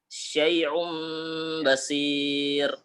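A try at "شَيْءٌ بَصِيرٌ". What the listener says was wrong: Nah, agak mirip ain itu, Ustaz. Syai'um basir.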